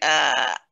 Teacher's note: hamza is supposed to have a sharpness to it